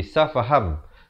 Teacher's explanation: Jadi cara bacaannya daripada safahan, bunyi nun tukar kepada bunyi mim jadi safaham, tetapi dibacakan dengan 2 harakat. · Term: iqlab